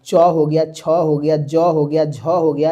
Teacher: च का उच्चारण स्थान तालु होता है